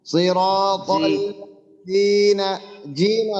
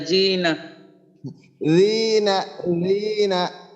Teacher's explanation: জিহ্বার আগা সামনের উপরের যে আমার দুই দাঁত আছে, ওই দুই দাঁতের আগার সঙ্গে জিহ্বার আগাটা লাগবে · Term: জালের মাখরাজ